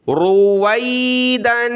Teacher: اس کو وی پڑھنا ہے، واو یا زبر وی، یعنی معروف پڑھنا ہے، اس کو مجہول رویدن نہیں پڑھنا، روی نہیں پڑھنا۔